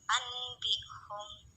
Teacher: Cara membacanya adalah dengan merapatkan kedua bibir, mendengung dan menahan selama 2 ketukan. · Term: iklab